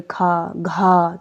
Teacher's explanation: महाप्राण जिसमें ज्यादा वायु आपके मुंह से निकलती है